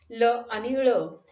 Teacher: हवा तोंडात अडवली जाते व ती बाहेर पडत असताना जिभेच्या दोन्ही बाजूंनी हळूहळू बाहेर पडते, त्यातून जे ध्वनी निर्माण होतात त्याला पार्श्विक व्यंजने असं म्हणतात.